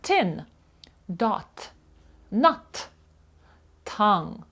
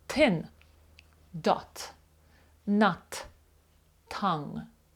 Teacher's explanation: задньою частиною передніх зубів так т Але якщо ми вимляємо Т язик відсувається чуть-чуть дальше і вимовляємо це Т з придихом